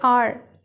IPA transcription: au-er